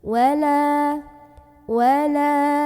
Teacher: cara membaca huruf lemnya dipanjangkan dua harokat saja jangan sampai kelamaan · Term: hukum Mad Thobi'i, mad tabi'i